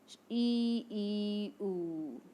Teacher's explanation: मुंह के खुलने के आधार पर संवृत स्वर के उच्चारण में मुख द्वार सकरा होता है। ई, उ सकरा है मुंह बोलने पर।